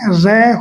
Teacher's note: लुंठित व्यंजन कहा जाता है। यानी ऐसा व्यंजन जो लौटता हुआ बाहर निकलता है या जिसको उच्चारण करते समय जीवा का अग्र भाग हल्का सा कंपन करते हैं। यह व्यंजन इस प्रकार से लौटता हुआ आता है। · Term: प्रकंपित व्यंजन